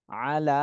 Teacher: লামে খাড়া জবর রয়েছে, এজন্য এক আলিফ টান দিতে হবে